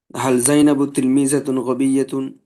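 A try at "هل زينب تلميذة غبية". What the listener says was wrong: মাশাআল্লাহ,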